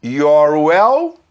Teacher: Se você pegar esse R do your e juntar com o som do U do welcome, você vai fazer your well.